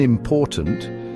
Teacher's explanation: The stress is on the second syllable.